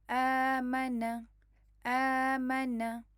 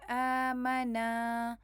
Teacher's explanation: حمزہ کے اوپر فتحہ ہے اور اس کے بعد یہ دیکھیں خالی الف آ رہی ہے، تو آپ نے اس کو 2 کاؤنٹس پڑھنا ہے